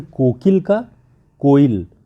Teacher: दो स्वरों के बीच में आने वाले अल्प प्राण व्यंजन प्रायः लुप्त हो जाते हैं। अल्प प्राण व्यंजन जो है वो प्रायः लुप्त हो जाते हैं, जैसे कोकिल का कोयल, तो जो बीच का की है वो अल्प प्राण है और वो हट करके कोयल हो जाता है, उसकी जगह पे केवल ई बचता है, क गायब हो जाता है।